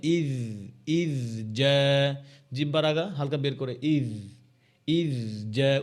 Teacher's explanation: জালের মধ্যে রখাওয়া আছে, কলকলা নাই, বাউন্স করবে না, কিন্তু আওয়াজ জারি থাকবে।